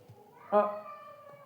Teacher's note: अ कंठ से आवाज आती है